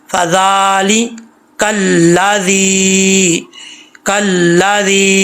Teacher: अच्छा, ये जाल के आगे या है, जाल ज़ेर या ज़ी, एक अलिफ की मिकदार इसको खींचा जाएगा, या मद्दा बोलते हैं इसको।